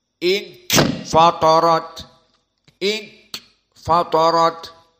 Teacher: jika kita katakan ikhfa kita dari makhraj kisum yakni hidung